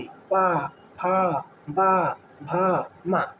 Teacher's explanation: लेकिन आपको जब पा, फा, बा, भा बोलना है तो हर हाल में ओठ को क्या होगा, सटाना ही पड़ेगा। हर हाल में दोनों ओठ क्या होंगे, सटेंगे, पा, फा, बा, भा, मा, है ना। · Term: ओष्ठ